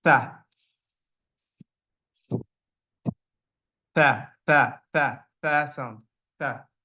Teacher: the tip of the tongue slightly goes below the upper two teeth and a decent amount of air flows out through the mouth, creating the th sound.